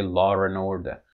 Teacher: it's because of analogy like car and a house you see British English speakers actually insert an R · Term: intrusive R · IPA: [lɔːɹ ən ˈɔːdə]